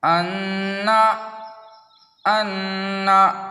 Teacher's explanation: تو دیکھیے قاعدہ ہے کہ تشدید کی آواز میں ایک قسم کی سختی ہوتی ہے۔ نون اور میم پر تشدید ہو تو غنہ ہوگا۔ ناک میں تھوڑی دیر آواز کو روکنا غنہ کہلاتا ہے۔ غنہ کی مقدار 1 الف کے برابر ہے، جیسے انا انا۔